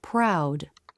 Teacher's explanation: tongue lifts to the roof of the mouth the word proud when R is in a beginning consonant cluster the lips may not be as tight as in a beginning R